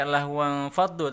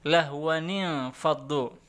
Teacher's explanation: Jadi tanwin ketemu nun sukun itu dibacanya ada nun tambahan di tengahnya atau nun iwat ya, nun pengganti, nun tambahan.